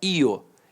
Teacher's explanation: Então o I semivogal e o O vogal.